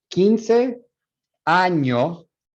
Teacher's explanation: She cuts that S out, that first S off, so that S isn't there. So phonemically, we put the S there, but allophonically or phonetically, we don't.